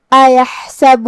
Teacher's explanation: کلمت ایحسبو میں حرف الحا کو ہم حلق کے درمیان والے حصے سے ادا کریں گے جو کہ اس پہ جزم ہے تو ہمیں حا کو ظاہر کرنا ہے.